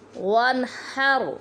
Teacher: اور وانحر پہ دیکھیں یہاں نون ساکن ہے اور اس کے بعد حروف حلقی میں سے ہا آ گیا ہے، اس لیے یہاں پر ہم غنہ نہیں کریں گے